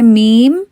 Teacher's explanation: میم کے آخر میں آپ نے ایک باؤنس سا جو ہے کلکلا سا جو ہے وہ نہیں کرنا۔ تو مثال کے طور پہ جیسا نارمل میم ہم پڑھتے ہیں وہ ہم پڑھتے ہیں میم لیکن اگر آپ اس کو باؤنس دیں تو آپ کریں گے میم.